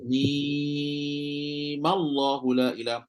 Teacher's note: Pertama adalah baca mim tu 6 harkat. Sebab asal dia memang 6 harkat pun.